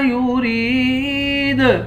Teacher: را کو یا کے ساتھ ملا کر یا کو ایک الف کی مقدار کھینچ کر پڑھیں گے، آخر میں حروف قلقلہ ہے، یہاں پر قلقلہ کریں گے۔